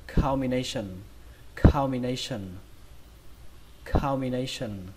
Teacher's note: trọng âm của từ này rơi vào âm thứ ba, đó là âm nay, nay. Ở đây chúng ta các bạn thấy ghi chữ A đúng không, và chúng ta đọc là âm A, nay, nay.